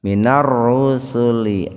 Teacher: membacanya itu diidghamkan, dimasukkan ke ro, lamnya diabaikan, tidak dibaca idhar dengan tebal, ro-nya dibaca tebal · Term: alif lam samsiyah tafhim